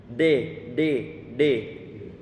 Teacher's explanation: ini sebelumnya kemarin sudah kita minta Antum untuk meraba lidah Antum bisa mengucapkan huruf d pasti dia tertekuk ke belakang ataupun berdiri ke atas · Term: d-nya orang Indonesia